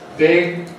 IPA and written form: bɪg (big)